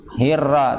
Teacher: Jangan lupa ketika ra ya tetap ada apa yang namanya getaran nira, tapi jangan terlalu banyak.